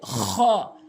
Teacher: হলকের শেষ থেকে খ উচ্চারণ হবে